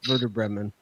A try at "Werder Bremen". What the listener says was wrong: Werder Bremen. You just like saying W's like V's. I think is probably part of that. Werder Bremen. It's a W, but it's pronounced Werder.